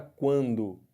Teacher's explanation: no ditongo nasal som sai pela boca e sai um pouco de som pelo nariz